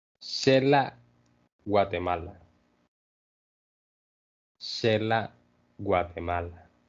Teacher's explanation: When the Spaniards were trying to write down the names of these places, they threw an X in there, but the pronunciation is more sh. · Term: the sh sound